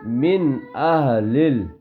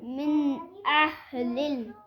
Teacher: نون کی آواز ناک میں نہیں چھپے گی بیٹا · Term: اظہار